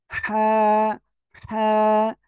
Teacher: গলার মধ্যখানে কি চেপে আপনি উচ্চারণ করবেন হলকের মধ্যখান থেকে অক্ষরটা উচ্চারণ হয় হা আর মুখ দিয়ে হালকা বাতাস বের হবে এরকম হাত রাখবেন